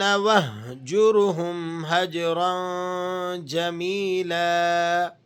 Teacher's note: حلق کے اس حصے سے ادا ہوتا ہے جو سینے کی جانب ملا ہوا ہو، اس لیے ہا کی آواز کچھ حلق سے اور کچھ سینے سے نکلتی ہوئی محسوس ہوتی ہے۔ یہ را موٹی کر کے پڑھی جائے گی۔ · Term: حروف حلقی